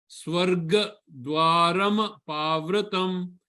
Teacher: he gives pressure on the ga